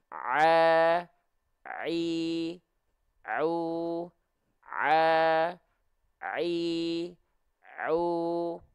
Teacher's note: epiglotis nah ketika kita melafalkan Ain ini ceritanya adalah dinding tenggorokan ketika kita melafalkan Ain katup epiglotisnya itu menyempit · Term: huruf Ain